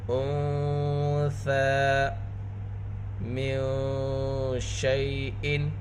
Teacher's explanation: انثى من شيء، یہاں پر نون ساکن میں اخفا ہوگا، نون ساکن کے بعد حروف اخفا میں سے ثا ہے، ثا نرم حروف میں سے ہے، ثا کے اوپر کھڑا زبر ہے، ثا کی آواز کو دو حرکت کے برابر کھینچ کر پڑھیں گے۔